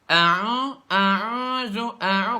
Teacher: Padahal a'udzu itu nggak ada sama sekali huruf yang keluarnya dari rongga hidung, semuanya dari rongga mulut, jelas semuanya, gitu kan? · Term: huruf ain